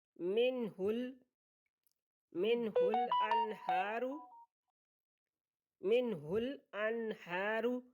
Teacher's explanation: نون ساکن کے بعد ہا حروف ہلکی میں سے آ گیا تو یہاں پہ اظہار ہوگا، غنہ نہیں ہوگا۔ حمزہ ہا، عین ہا، غین خا حروف ہلکی ہیں، اور نون ساکن نون تنوین کے بعد ان میں سے کوئی بھی لفظ آ جائے تو اظہار ہوگا۔